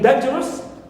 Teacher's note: Also we have us, like in dangerous, dan is stressed, but rus is neutral.